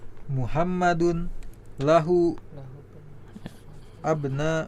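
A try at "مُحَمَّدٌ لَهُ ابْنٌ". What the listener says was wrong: Ya, disambung aja. Muhammadun lahu benu. Lahu benun.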